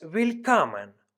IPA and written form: vɪlˈkɔmən (Willkommen)